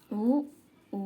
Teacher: సంవృతం ఉత్తర స్వరం ఓష్ట్యమైన అచ్చు